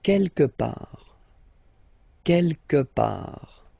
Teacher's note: Don't pronounce the final T.